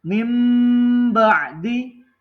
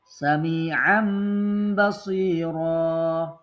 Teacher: Nah, jadi suara nun sukun ditukar menjadi suara mim mati. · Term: iklab